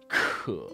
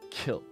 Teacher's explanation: in Chinese, they are heavily aspirated. And aspiration just means the amount of breath coming out of your mouth as you say the sound.